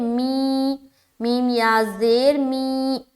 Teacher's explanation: یا مدہ کو کتنا کھینچتے ہیں؟ ایک الف کی مقدار کے باقدر